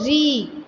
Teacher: जहाँ हमारी जीभ है जिस अंग को टच करती है वो हमारी मूर्धा हो जाएगी। तो इसलिए हम जो री है वो मूर्धन्य स्वर है।